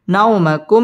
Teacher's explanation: বাম পাশে জজম ওয়ালা ওয়াও লিনের হরফ তাড়াতাড়ি পড়তে হবে নাওমাকুম মিম সাকিনে ইজহারে খাস গুন্না ছাড়া পড়তে হবে